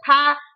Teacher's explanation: फ में भी हमारे ये ऊपर के होठ और नीचे के होठ क्या करते हैं स्पर्श करते हैं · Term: ओष्ठ